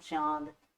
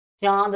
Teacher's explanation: चांद जब हम बोलेंगे तो नाक और मुंह दोनों का प्रयोग कर लेते हैं, ठीक है। यानी नासिका का भी प्रयोग कर लेते हैं, मुख का भी प्रयोग कर लेते हैं।